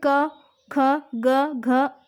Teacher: क, ख, ग, घ ये सारे जो हैं कंठ से बोले जाते हैं।